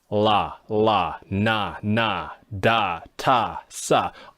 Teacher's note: If you're going to use an L mouth, you should be using it for all of these consonants because they're what are called alveolar consonants. They are all produced by touching the tip of your tongue to the alveolar ridge behind the teeth. None of these consonants even involve the teeth in any way.